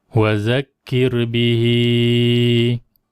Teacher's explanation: kita baca bihi masih 4 ataupun 5 harakat. Ni ha dhamir. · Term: mad silah